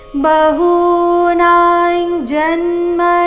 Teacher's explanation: ಅನುಸ್ವಾರದ ಉಚ್ಚಾರಣೆ ಚ ವರ್ಗದ ಅನುನಾಸಿಕದ ರೀತಿ